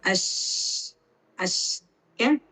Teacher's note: അത് ഉച്ചരിക്കുന്ന സമയത്ത് നമുക്ക് അതിന്റെ സൗണ്ട് പുറത്തേക്ക് കാറ്റിന്റെ സൗണ്ട് നമ്മൾ കേൾക്കും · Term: ഷീൻ